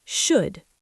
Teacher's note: Do not push your tongue up to make an L sound. Keep your tongue relaxed.